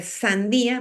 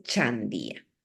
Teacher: Una fricativa se cambia por una palatal. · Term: palatización de fricativas